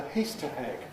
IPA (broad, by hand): ˈhiːstə heg